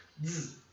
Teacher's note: O Z tem um som próximo com um Z, Z, como se fosse um DZ que a gente fosse representar em português, né?